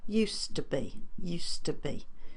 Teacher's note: D there we don't hear because of the subsequent T so the D is a voice sound the t is an unvoiced sound but they have the same you do the same thing with your mouth so consequently that D gets lost